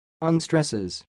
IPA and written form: ʌnˈstrɛsɪz (Unstresses)